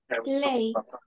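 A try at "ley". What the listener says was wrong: Лей. Sí, muy bien.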